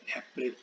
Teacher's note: ऐसे ही अप्रैल बोलेंगे तो किस पर फोर्स पड़ रहा है, ए पर